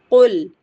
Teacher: قاف حروف مستعلیہ سے ہے، اسے پورا فل ماؤتھ پڑھیں گے، اور قاف کا مخرج ہمارے اکثر لسان سے ہے، تو زبان کی جڑ اس کے مقابل اوپر تالو، جو چھوٹی زبان ہینگ ہوتی ہے وہاں لحاظ جسے کہتے ہیں، اور لام ساکن کو ہلانا نہیں ہے، پورا فل ماؤتھ پڑھنا ہے۔